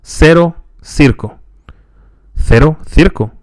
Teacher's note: So in Spain, you will hear th for the C before the following two vowels.